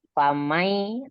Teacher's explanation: nun sukun bertemu dengan ya dibaca gunnah karena terjadi idgham bi gunnah, nun sukun atau tanwin yang bertemu dengan huruf ya.